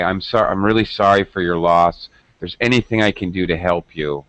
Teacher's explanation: We tend to use much lower intonation and speak softly. When we're giving bad health news, or someone has died or whatever.